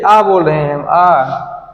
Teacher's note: तो हमारा खुल जा रहा है लेकिन गोलाकार नहीं हो रहा है